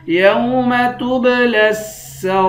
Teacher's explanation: لام کو سین کے ساتھ ملا کر سختی کے ساتھ جمع کر پڑھیں گے